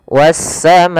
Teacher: Pada lafal was-sama di sini ada alif lam syamsiyah kembali, yaitu alif lam yang ditulis tapi tidak terbaca lamnya, sehingga langsung ke huruf sin yang berharakat tasdid.